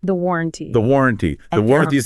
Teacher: Listen to that stress on the first syllable war.